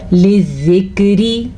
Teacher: لِذِّکْرِ، اچھا زال کو نرمی سے پڑھنا چاہیے، اور را کو ہم باریک پڑھیں گے کیونکہ را کے نیچے زیر ہے